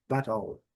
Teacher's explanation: No inglês britânico, o T é bem pronunciado, battle. E no inglês americano, battle.